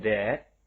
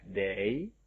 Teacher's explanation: Yaitu bunyi voice dental fricative.